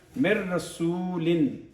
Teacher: جب نون ساکن آ جائے، اس کے بعد اگر رے آ جائے تو ہم نے ادغام کامل کرنا ہوتا ہے · چار حروف ہیں جس میں ادغام ناقص ہوتا ہے، اس میں رے اور لام کی شکل میں ادغام کامل ہوتا ہے، تام کہتے ہیں، ادغام تام کہتے ہیں۔ اس میں ہم نے نون کو بالکل نہیں بولنا